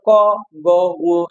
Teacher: যেগুলো উচ্চারণ করার সময় ধাক্কা কম দেওয়া লাগে। ক, গ, ঙ এগুলো জোরে শ্বাস নেওয়া লাগে না, শ্বাসে আমাদেরকে চাপ দেওয়া লাগে না। সো এগুলো হচ্ছে অল্প প্রাণ।